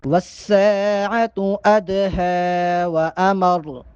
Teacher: بل الساعة موعدهم، والساعة أدهى وأمر، والساعة أدهى وأمر، والساعة، یہاں پر بھی سین کو ایک الف کے برابر لمبا کریں گے، اور ادہا چونکہ دال پر جزم ہے، دال ساکن ہے، دال پہ کڑکڑا کریں گے اور ہا پہ کھڑا زبر ہونے کی وجہ سے ہا کو ایک الف کے برابر لمبا کریں گے۔